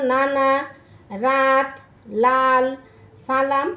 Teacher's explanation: ওটা কিন্তু দন্ত শুধু দাঁত বলছে এটা দন্ত মূলীয় এখানে জীভের ডগা উপরের পাটির দাঁতের গোড়ার সঙ্গে লেগে যাবে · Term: দন্ত মূলীয় ব্যঞ্জন